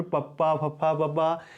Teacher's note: इन्हां दे उचारण वेले तुहाडे जिहड़े होंठ है वो आपस में मिलते हैं। जिवें बोल के देखो पप्पा फप्फा, इस तरीके दे नाल होठ है जिहड़े ओह मिल के वक्खो वक्ख हो जाते हैं। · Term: होठी धुनियां